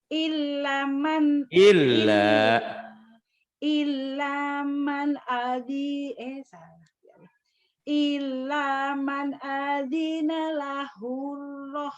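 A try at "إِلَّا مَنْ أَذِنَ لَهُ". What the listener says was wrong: Lahunya pendek. Illa man adina lahur rahmanu wa qala sawaba.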